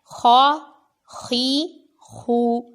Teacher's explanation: خا حروف مستعلیہ میں ہے، اس کو پر پڑھنے پر غور کرنا ہے